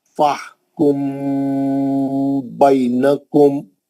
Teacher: میم ساکن کا اخفا حرف با